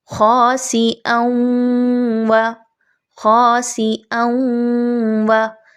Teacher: حمزہ کی دو زبر کی آواز کے ساتھ آپ نے واو کی آواز کو پہلے ملایا، ساکن کیا واو کی آواز کو، اون، اس کے بعد واو کی زبر کو پڑھا، واو زبر وا، خاصی اون وا۔